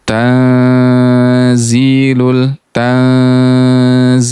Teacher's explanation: Ah, hati-hati di kata tanzil. Tanzilul dia harus diikhfakan, didengungkan, ditahan tiga ketukan.